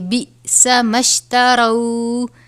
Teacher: حمزہ ساکنہ ہے، جھٹکا دے کر پڑھیں گے